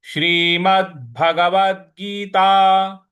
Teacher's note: व के बाद जो द है इस पर भी हमको आघात देना है।